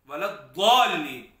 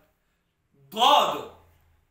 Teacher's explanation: زبان کا جو ابتدائی سرہ ہے اسے مکمل پھیلانا ہے اور یہاں دانتوں کے ساتھ لگانا ہے. ضاد دانتوں کی بالکل جہاں سے دانت شروع ہوتے ہیں داڑھوں کے ساتھ لگانا ہوتا ہے دراصل